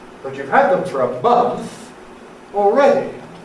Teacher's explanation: we then use the pattern of a Fall-Rise and a Fall · the Fall-Rise draws a contrast. That’s one of its main meanings, a contrast between what is and what isn’t.